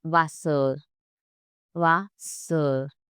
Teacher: At the end of the word, R softens into a lazy sound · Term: German R